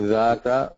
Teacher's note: Dhata, with the tongue touching the top incisors. Okay, the top front teeth, the edge of the top front teeth, it should be touching there. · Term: dhal